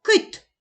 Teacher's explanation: перший звук к який він приголосний твердий